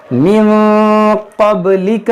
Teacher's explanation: नून साकिन के बाद काफ, यहाँ पर इख्फा होगा।